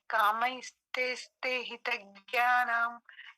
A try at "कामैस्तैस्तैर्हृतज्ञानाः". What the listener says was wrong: ज्ञानम में विसर्ग नहीं है, स्वर नहीं है। ज्ञाना